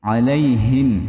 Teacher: H-nya tebal, Teman-teman. Hi bukan ha. Bukan h tapi hi.